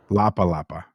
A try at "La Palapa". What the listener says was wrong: Sounds like you're saying Lapa Lapa. Lapa. You mean La Palapa.